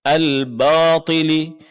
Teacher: Sering terjadi kesalahan di sini huruf ba ditebalkan sehingga bunyinya al batili